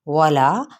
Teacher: واو ہونٹوں کی نا تمام گلائی کے ساتھ